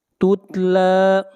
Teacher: لام کے اوپر کھڑی زبر ہے، کھینچ کر پڑھیں گے 1 الف کے برابر